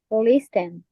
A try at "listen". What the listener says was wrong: No, listen, no, listen. Yeah, don't pronounce the letter T. La letra T es silenciosa.